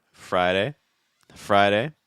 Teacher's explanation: see how light that fast D sound is in the middle